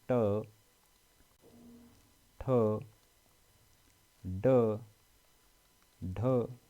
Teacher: इसमें देखिए जब हम बोलते हैं जिन शब्दों को ट तो हमारे जीभ का जो स्पर्श है वो और दांतों से थोड़ा पीछे की तरफ हो जाता है इसको मूर्धन्य वाला हिस्सा कहा जाता है ऊपरी भाग कहा जाता